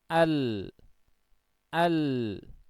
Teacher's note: Sisi lidah bagian depan yang ditempelkan di langit-langit keras yang sejajar ya jadi ketika Suara ini akan keluar itu ternyata terhalang begitu sedikit ya terhalang oleh makhroj dari huruf lam ini maka suaranya pun